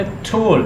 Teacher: टोल्ड, आप बोले टोल्ड, आपको पता चलेगा टिप ऑफ द टंग जो है वो आपकी एल्विलर रिज, ये अगले दांत जो है इसके पीछे उभरी हुई एक थोड़ी सी प्लेस है उसको टच करेगी. टोल्ड, I've told you so many times. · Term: Alveolar sound